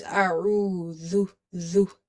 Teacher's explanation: Dhal is a dental letter. So it's from the tip of the tongue when it touches the inner edges of your top two front teeth. So never lose control on the tongue while pronouncing dhal.